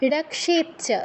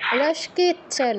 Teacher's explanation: কয় হসন্ত যুগ স, তো কটা আগে উচ্চারণ করতে হবে, রক্ষেচ্ছ, রস্কেচ্ছ নয়।